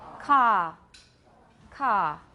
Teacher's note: in the word car Brits don't pronounce the R · Car has no schwa diphthong, does not become a diphthong, let's put it that way. The vowel does not become a diphthong, there is no schwa. It is simply ka. It's a very long ah sound.